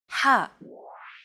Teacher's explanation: You want to make an H sound, but with the throat constricted a little.